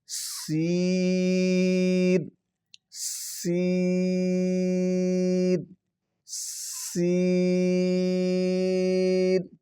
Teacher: یہ ان میں تھوڑا سا سیٹی کی آواز آئے گی اور اس کو باریک کر کے ادا کرنا ہے۔ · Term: سیٹی والے